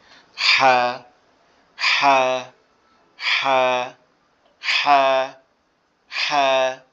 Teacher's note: এই যে হাটা দেখতে পাচ্ছি আমরা এখানে বেগুনি কালারের দাগের মধ্যে যে হাটা আছে, এটার আওয়াজটা কি হবে? গলা চেপে হবে, আওয়াজটা কঠিন হবে।